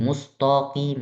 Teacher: di ta jangan sampai jadi tebal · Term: tipis